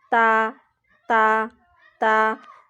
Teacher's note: تا کا مخرج زبان کی جو نوک ہے سامنے والے اوپر والے دانتوں کی جڑ کے ساتھ لگتی ہے